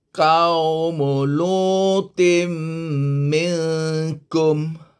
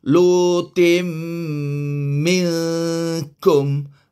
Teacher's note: kita kena masukkan bunyi tin ke dalam bunyi mim. Jadilah dia bunyi min.